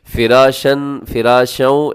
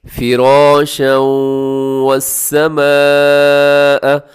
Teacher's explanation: اکثر لوگ کیا کرتے ہیں فراشن، فراشوں، ایسے درست نہیں ہے۔ را کے اوپر زبر ہو یا را کے اوپر جب بھی کوئی حرکت ہو تو را کو اپنے منہ بھر کے موٹا کر کے پڑھنا ہے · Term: را موٹا